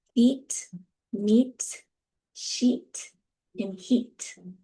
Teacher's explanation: The jaw is in a closed position. Your lips are retracted, right? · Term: E vowel